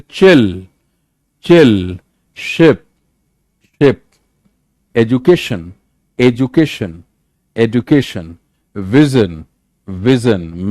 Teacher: Post alveolar, made of tongue blade and the back of the alveolar ridge. इसीलिए थोड़ा और पीछे जाएगा.